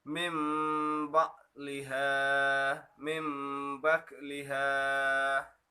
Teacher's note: jadi huruf nun mati itu digantikan dengan huruf mim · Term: iqlab